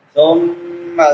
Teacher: میم مشدد آ گئی ہے، میم مشدد پہ غنہ ہوتا ہے، شد والی میم